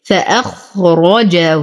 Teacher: نفخم الخاء والراء. نقفل مخرج الجيم وتم ضمة الهاء.